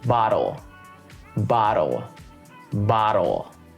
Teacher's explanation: even with the flap t bottle i'm hitting it pretty hard i'm making sure it's very clear bottle bottle bottle try it it's not like i'm saying bowl